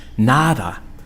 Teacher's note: Nothing in Spanish, where D sounds like TH.